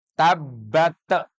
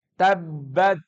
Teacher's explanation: ta itu jelas bukan huruf Qalqalah Maka jangan sekali-kali memantulkan huruf ta dalam keadaan mati